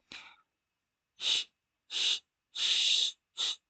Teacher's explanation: You can hear that the sound spreads out. It's flowing very easily. Contrast to lifting the tip of the tongue, that blocks air, right? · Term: Sheen